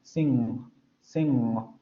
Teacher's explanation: Sing, sing, vibración de cuerdas vocales. El bloqueo de la cavidad oral se da entre el velo y la parte posterior de la lengua y el aire sale por la nariz. · Más o menos ya sabemos cómo se va a articular, son fonemas ya un poco complicados. La parte posterior de la lengua se va a ir hacia la zona del velo. A partir de ahí es donde se va a cerrar el conducto hacia la boca, es decir, lo vamos a cerrar ahí y va a pasar el aire hacia las cavidades nasales y vamos a hacer vibrar las cuerdas vocales. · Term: velar nasal sonora